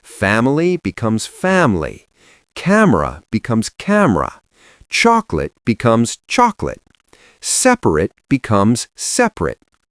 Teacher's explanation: the native speakers were simply deleting the middle vowels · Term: dropped syllables